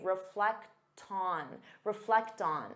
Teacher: because you have that T sound, you can transfer it to the next sound and say reflect on.